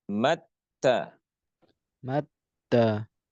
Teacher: huruf ta ketika dimatikan atau disukunkan maka suaranya akan berdesis. Akan keluar suara hames, hembusan nafas.